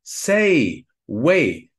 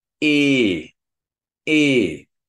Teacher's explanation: It's not like in English, say or way, because in English, it's a diphthong. It's a plus e. · In German, it's like a monotone constant sound. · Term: long E